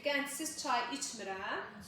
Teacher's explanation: D t ilə əvəz olunacaq